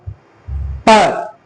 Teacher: दोनों होठ आपस में मिल जा रहा है, तो जब दोनों होठ आपस में मिल जा रहा है तो वायु का मार्ग रुक जा रहा है। प जब आप प बोलते हैं तो दोनों होठों में मिल जाता है।